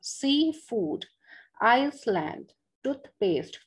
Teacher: तो पहले वाले नाउन पे जो है द स्ट्रेस विल कम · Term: कंपाउंड नाउन